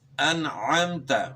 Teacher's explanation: تا کا مخرج جو طا کا مخرج ہے وہی تا کا مخرج ہے، یعنی زبان کی نوک اور ثنایا علیا کی جڑ